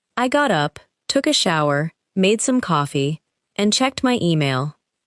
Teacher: The word and simply connects the final two actions. In fast speech, it may almost disappear.